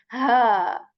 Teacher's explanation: the portion of throat near to the chest. So we are going to we're going to produce like this, ha.